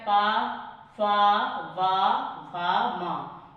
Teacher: ऊपरी ओठ और नीचे वाला ओठ आपस में टच होंगे पा वर्ग में, इसीलिए ओष्ठ व्यंजन के नाम से जाना जाता है।